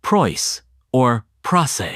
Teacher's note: The price vowel in Cockney is famous for moving towards oi or even oi.